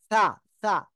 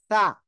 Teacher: জিব্বার আগা, উপরে দুই দাঁতের আগায় লাগান লাগান লাগান।